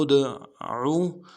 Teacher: دال میں کھینچیں گے، لام کو دال کے ساتھ ملانا ہے، دال حرف قلقلہ میں سے جب ساکن ہوگا تو قلقلہ کریں گے